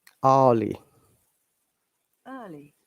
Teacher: in british english in most of the cases we don't pronounce the r at all rather we bring a vowel sound in that case